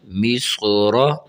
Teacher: یہاں صاد بھی موٹا ہے اور را کو بھی موٹا کر کے پڑھنا چاہیے